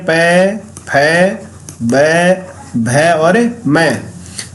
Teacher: और इन सब का उच्चारण स्थान होता है औष्ठ, यानी इनको बोलने में औष्ठ है। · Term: पै वर्ग